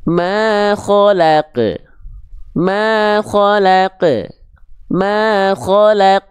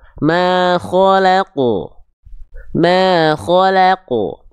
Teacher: Nah, tapi ketika huruf qaf dalam kondisi bersukun, qaf selalu dibaca dengan keadaan yang tebal. Qaf ketika dalam kondisi mati atau sukun, dia selalu dibaca dengan keadaan yang tebal.